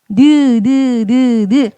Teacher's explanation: 이 니은은 느 한번 해보시면 아시겠지만 혀 끝이 윗잇몸에 붙었다 떨어졌다 붙었다 떨어졌다 그렇게 소리가 나는 거 확인할 수 있지